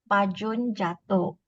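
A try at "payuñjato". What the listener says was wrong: There's no J. There's no J. There's Y actually. Payun jato. Payun jato.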